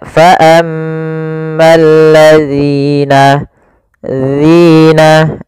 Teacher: ujung lidah kita tempelkan dengan gigi seri atas, agak kita keluarkan sedikit sehingga berbunyi zi · Kemudian pelafal zi sendiri ini ada mad tabi'i ditandai dengan harokat kasrah pada huruf zal bertemu dengan huruf ya setelahnya yang disukunkan. Maka apabila ada kasrah bertemu ya sukun, kita namakan dengan mad tabi'i, panjangnya 2 harokat